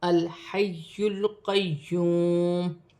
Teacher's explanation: جائے گا، الحی القیوم، جیسے الحی القیوم۔ یا بھی مشدد ہے، واو ساکن سے پہلے پیش آ رہی ہے تو واو مدہ بنے گی، ایک الف کی مقدار کھینچ کر پڑھا جائے گا